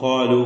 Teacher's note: അപ്പോൾ [സംഗീതം] ഇന്നാലു ഇതിലുള്ള വാവിന്റെ ദീർഘം മദ്യം മുൻഫസിൽ ജായിസ് എന്നതാണ് ഇവിടെ നാലോ അഞ്ചോ ഹറക്കത്തിന്റെ അളവിൽ വാവിനെ ദീർഘിപ്പിച്ച് ഉച്ചരിക്കൽ അനുവദനീയമാണ് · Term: മദ് മുഫസിൽ ജായിസ്